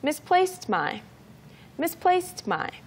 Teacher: So the D in misplaced sounds like a T sound in this case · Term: very soft T sound